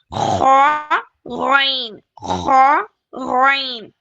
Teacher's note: दोनों भी bold letters हैं हैवी लेटर्स हैं दोनों को किस तरह पढ़ना है विद फुल माउथ वर्गलिंग साउंड के साथ